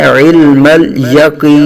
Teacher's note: عین کی آواز حلق کے درمیان سے صحیح نکالنی ہے ، اور علم مل پہ آواز ہلنی نہیں چاہیے بلکہ لام